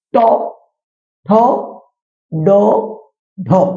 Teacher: এরপর চারটে বর্ণ আছে, ট, ঠ, ড, ঢ। এই চারটে বর্ণ যখন উচ্চারিত হয় তখন জীবের গড়ার দিকটা উল্টে গিয়ে দন্তমূলের কাছে এসে উচ্চারিত হয়। অর্থাৎ জীবের গড়ার দিক দন্তমূলের কাছে এসে উল্টে গিয়ে এই বর্ণগুলো উচ্চারিত হয়। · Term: প্রতিবেষ্টিত বর্ণ